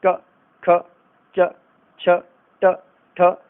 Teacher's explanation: अघोष वर्ण वे होते हैं जिनको बोलते समय स्वर तंत्रिका में यानी ग्लॉटिस में कोई कंपन नहीं होता। ये सिंपल सामान्य रूप से बोले जाते हैं।